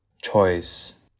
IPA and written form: tʃɔɪs (CHOICE)